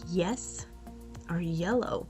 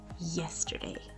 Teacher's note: in Spanish, the Y sound, what you call Y, is usually pronounced as a J.